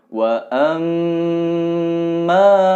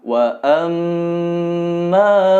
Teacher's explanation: Mim bertasydid, ditahan 2 atau 3 harokat dan didengungkan. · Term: gunnah